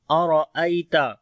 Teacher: حمزہ کو باریک پڑھیں گے، گلے کے نیچے والے حصے سے، را کو موٹا پڑھیں گے، یہاں پر یا لین ہے نرم پڑھیں گے، تا کو بھی باریک پڑھیں گے۔